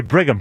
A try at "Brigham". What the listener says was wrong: There's no N. There's no N in Brigham. It's not Brigham. It's Brigham. No, it's Brigham. The H is silent.